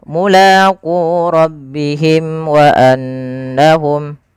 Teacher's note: Syafawi berarti dia berkenaan dengan berkenaan dengan bibir kita. Maka karena makhraj daripada huruf mim di bibir, maka suara mimnya di sini harus dijelaskan. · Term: izhar syafawi